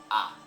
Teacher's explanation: one open unrounded Central vowel ah